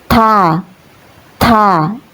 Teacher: Huruf ta ini dalam bahasa Arab keluar dari ujung lidah yang sedikit dijepit antara dua gigi seri atas dan bawah